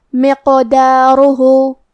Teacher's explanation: قاف بھی حروف القلقلہ میں سے ہے تو ہم یہ حرف کو ہلاتے ہوئے یہ کلمہ کو پڑھیں گے۔ مقدارہ، آخری میں ہا پہ الٹا پیش ہے تو یہاں مد صلہ صغرا ہے، ہم اپنی آواز 2 مد کے برابر لمبی کریں گے۔